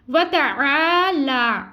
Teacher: عین حلق سے ادا کریں گے باریک ادا کریں گے اور عین یہاں پہ الف مدہ کو ایک الف مقدار کے برابر کھینچیں گے.